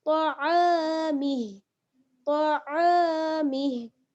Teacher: اگر ٹھہریں گی تو ہم کیا کر دیں گے, ہا کو ساکن کر دیں گے اور میم کو ہا کے ساتھ ملا دیں گے. میم ہا زیر مہ, میم ہا زیر مہ, طعامہ طعامہ.